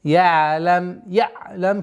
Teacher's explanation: Айн мягкая, такой скользящая остановка.